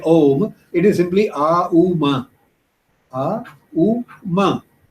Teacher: they are basically vowels followed by ma, which is the bilabial and voiced and so on. Ma is also a very soft sound.